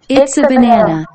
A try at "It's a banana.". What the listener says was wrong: 오케이, okay, it's banana가 아니고 it's a banana이죠. 어는 우리말과 영어의 차이점을 나타내는 특징 중에 하나예요.